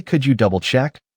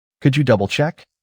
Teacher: With a rising tone on check. It's a request, not an accusation.